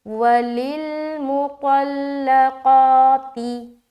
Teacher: طا موٹا حرف ہے اور قاف بھی موٹا حرف ہے، تو ان دونوں کو موٹا کر کے ادا کرنا ہے